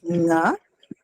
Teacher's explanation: its place of articulation is the velum, but it is produced in a nasal manner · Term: velar sound